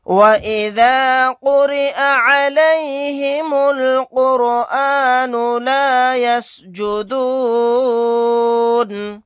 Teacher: قاف کو یہاں پر موٹا یعنی پر پڑھیں گے, را کو باریک پڑھیں گے. میم کو لام میں ملا دیں گے, الف نہیں پڑھا جائے گا.